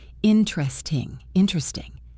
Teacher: always with the primary stress on in